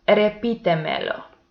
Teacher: the one syllable before the antepenultimate is the stressed one, and it has the accent mark.